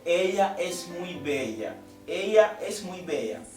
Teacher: o L aqui entra nesta palavra, nesta frase, e é pronunciado como se fosse um I.